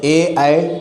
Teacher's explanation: ए, ऐ इनका उच्चारण आपका कंठ और तालु दोनों से होगा। और जीभ से भी जीभ का भी यूज होगा।